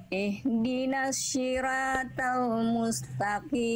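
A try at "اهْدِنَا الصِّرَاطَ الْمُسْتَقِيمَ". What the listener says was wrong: Siro, ro Bunda, ro bukan sira. Ro itu huruf tebal, huruf tipis. Ya, jadi jangan sampai ihdinas sira. Ihdinas siratal mustaqim.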